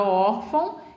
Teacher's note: na palavra órfão, eu tenho or como sílaba tônica